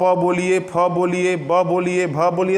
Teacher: मुंह खुला हुआ हो आपका और आप प बोलिए, फ बोलिए, ब बोलिए, भ बोलिए, संभव नहीं है। जब दोनों होंठ आपके एक दूसरे से मिलेंगे तब जाकर आप इन वर्णों को बोलेंगे, और जब आप इन वर्णों को होंठ मिलने के बाद बोलेंगे तो ये ओष्ठ वर्ण कहलाते हैं, ओठ के द्वारा बोले जाने वाला वर्ण।